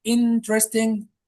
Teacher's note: The stress falls on the first syllable.